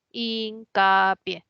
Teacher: La mayor fuerza de voz en pie, es aguda. Termina en vocal si se tilda.